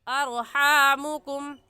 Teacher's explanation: را ساکن سے پہلے زبر آ گیا تو را ساکن کو پر یعنی موٹا پڑھیں گے، اور موٹا کرنے کا طریقہ کہ آپ کے دونوں ہونٹ گول ہو جائیں